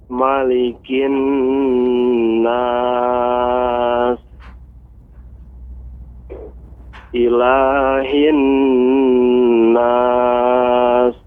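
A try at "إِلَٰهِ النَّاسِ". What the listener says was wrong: Nah, huruf sinnya belum terdengar jelas dengan saya. Coba lebih dijelaskan lagi, Pak. Malik, ilahin nas. Nah, diberikan apa? Desisnya lebih banyak, ya. Nas.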